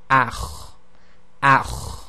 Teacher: So it's this sort of grinding sound, and it's effectively a continual exiting of the air, but you're constricting the windpipe at the same time · it's a letter that requires you to slightly constrict the throat. So here we have ach, ach, and it's a continuation of breath and a continuation of the sound ach, ach.